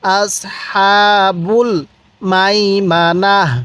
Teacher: তাকে হা বানিয়ে দিব ওয়াকফের কারণে